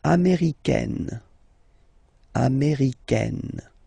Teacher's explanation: Okay, it's really open, this A-I, américaine.